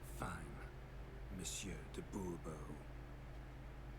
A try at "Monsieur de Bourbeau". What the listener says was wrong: The emphasis falls on the last syllable.